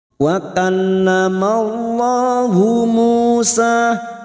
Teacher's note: wakaf wallamallahu Musa taklima wakal masuk ke dalam yang bertasdid wahuallahu lam jalalah yang sebelumnya ada harakat fathah kita baca tafkim atau tebal